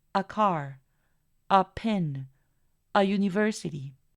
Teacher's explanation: vamos a pronunciar ese artículo como una schwa y va a sonar como a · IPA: /ə/